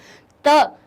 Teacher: त हमारी दांत से जिह्वा, हमारी जीभ जो होती है वो दांत से टकराती है, इसलिए इनको दंतव्य कह देते हैं।